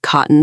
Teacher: cotton actually utilizes a glottal stop instead of a flap because the T is immediately followed by an N.